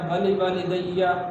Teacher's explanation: دوسرے واو کے بعد الف ہے تو اس الف کو صحیح نہیں پڑھتے اور یہاں پر لمبا نہیں کرتے